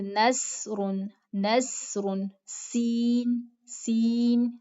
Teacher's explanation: سین کی آواز باریک ہوتی ہے لیکن اس میں سیٹی بھی پائی جاتی ہے، جیسے نصر، نصر، سین، سین، سیٹی ہلکی سی آتی ہے.